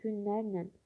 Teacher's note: Lər şəkilçisi nər şəklində tələffüz olunur. L nöyə keçdi.